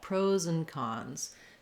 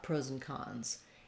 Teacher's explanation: But when I link these two words together, pros and cons, you can hear that I'm not really saying and. There's kind of no d sound, and there's not much of that ah vowel anymore. It becomes more of a reduced vowel